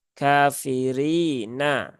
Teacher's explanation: rinya ini berbaris kasrah maka ee rinya dibaca dengan tipis